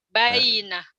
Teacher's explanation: Jangan bayi, yinya jangan ditahan.